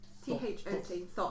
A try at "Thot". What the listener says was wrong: That's Thot, yes. But pronounced Tot. Thot.